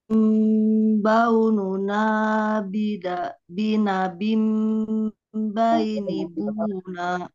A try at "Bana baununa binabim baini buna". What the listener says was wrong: Nah, ini apa namanya kurang samar, Pak. Ibu? Coba disamarkan lagi. Bana baununa binabim. Ya, apa jadi tidak bam tapi bam akan beda ya, sedikit samar.